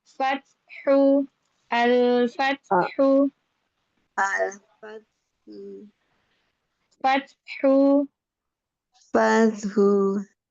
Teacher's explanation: ta sukunnya. E keluarkan dulu hamesnya, nafasnya keluarin baru ke ha.